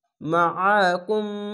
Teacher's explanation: আইনটিকে মোটা করে গলা চিপে পড়বেন মাআকুম। এখানে কোনো টান হবে না, কুম বলেই থেমে যাবেন।